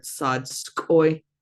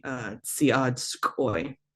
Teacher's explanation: we tend to kind of drop that I off, so we blend it all together.